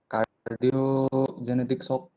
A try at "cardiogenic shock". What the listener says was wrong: Not genetic, cardiogenic shock.